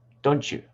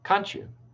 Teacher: the phoneme t followed by the word you becoming chu